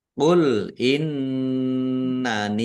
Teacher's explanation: nun tasdid dibaca ghunah atau mendengung ditahan biar tampak mendengungnya